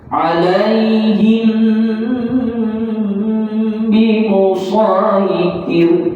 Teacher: rapatkan bibir tapi dengung, jangan rapat tak dengung. Alaihim bimusaitir, dengungnya cukup rasa. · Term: ikhfa syafawi